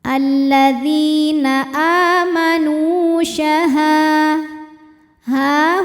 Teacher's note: sebab ada Alif didahului harakat fathah cara baca huruf ha-nya adalah dipanjangkan dua harakat